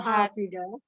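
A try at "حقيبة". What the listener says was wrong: Haki bukan hafi, Umi. Kof, pakai kof ya. Hakibatu. Hakibatu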